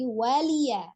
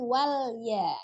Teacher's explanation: Kadang kita terbaca lamnya disukunkan walya, tapi ini waliya